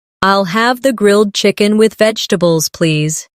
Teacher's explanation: The main stress is on grilled chicken and vegetables.